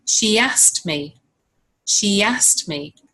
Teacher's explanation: Can you hear that y sound between she and a? There's no gap, there's no space between the words. They're completely linked.